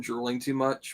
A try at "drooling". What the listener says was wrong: Well, next time pronounce it drooling instead of drilling, because